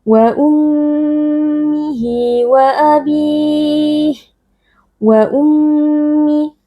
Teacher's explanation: Ayat ke-35, wa ummihi wa abih, wa ummi, mim tasydid wajib berdengung, yaitu kita tahan sebentar dengan memasukkan suara ke dalam khaysyum atau ke dalam rongga hidung